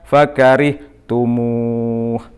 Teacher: Artinya mad tabi'i yang berada di akhir kata. Dibaca panjang 2 sampai 6 ketukan atau harokat. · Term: mad aridli sukun